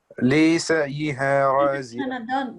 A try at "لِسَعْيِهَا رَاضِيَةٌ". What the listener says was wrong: No, don't say lisa. Like, only 1 second. Lisa.